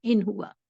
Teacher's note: ان ہوا کو ہم ان ہوا نون، کلیئر نون کے ساتھ میں پڑھیں گے